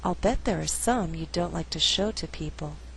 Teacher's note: I did not stress the verb like although like is a Content word the flow is a little more natural without stressing all those